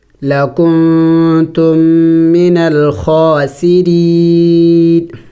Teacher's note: وقف کریں گے تو وقف میں اس اخیر والے نون کو سائلنٹ کریں گے یعنی ساکن کر دیں گے